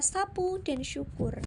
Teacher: udara dilepaskan melalui celas sempit menghasilkan bunyi gesekan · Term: frikatif